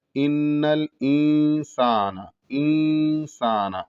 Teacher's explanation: جب یہاں پر اخفا کو ادا کریں گے تو نون کو پوری طریقے سے ادا نہیں کریں گے، بلکہ نون کی آواز رہے گی اور غنے اور اس کے ساتھ ساتھ غنہ رہے گا.